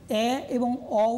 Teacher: দেখো বিবৃত যখন বলেছিলাম, যখন আ করছি মুখবিবর সম্পূর্ণরূপে খুলে গেল, কিন্তু যখন এ এবং অ উচ্চারণ করছি মুখবিবর খুললো, সম্পূর্ণ খুললো না, অর্থাৎ সম্পূর্ণ থেকে খানিকটা কম। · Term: অর্ধ বিবৃত